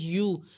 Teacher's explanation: یا کی پیش کو گول ہونٹوں سے ادا کریں، یا پیش یو، اس کو یو نہیں پڑھنا، ٹھیک ہے.